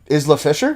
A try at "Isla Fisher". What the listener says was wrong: Isla Fisher. I think the S is silent.